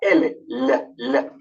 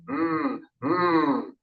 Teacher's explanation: Al pronunciar estos sonidos, utilizamos las cuerdas vocales. Vibran las cuerdas vocales. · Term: sonidos sonoros